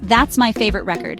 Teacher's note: in the sentence, That's my favorite record, the stress is on the first syllable, referring to a vinyl album. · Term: word stress